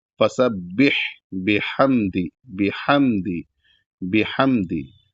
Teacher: जब यहां पर हा साकिन को अदा करेंगे तो यहां पर हा बड़ा हा की आवाज निकलनी चाहिए जो कि हलक से निकलेगी।